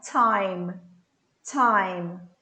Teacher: eu não toco os dentes. Eu ponho a língua um pouquinho mais para trás no palato. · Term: T com um chiadinho